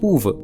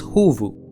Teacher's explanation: in many words, the Pa in Tamil shifts to Ha in Kannada · This is nothing but the p to h shift of poovu in Tamil